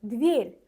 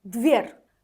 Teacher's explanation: Birində r incə tələffüz olunur, dver. Digərində isə qalın tələffüz olunur.